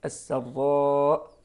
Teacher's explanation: نقول بتفخيم الراء وليس بترقيقها، قد السراء، لا غير صحيح، السراء هكذا بتفخيم الراء وترقيق السين.